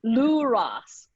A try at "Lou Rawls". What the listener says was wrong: Yeah, Lou Rawls. Rawls. no, almost. You got to lift your tongue up for the last part of that L. Lou Rawls. It's going to sound like because you've got to lift your tongue up so it'll go from into Rawls.